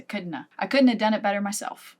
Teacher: we turn “have” into “a” at the end of this one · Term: couldn’t’a